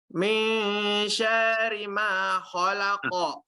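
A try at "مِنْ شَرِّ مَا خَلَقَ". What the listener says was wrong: Syanya coba lihat, perhatikan syanya panjang atau pendek? Nah, tadi dibaca panjang atau pendek? Nah, syarri tipis.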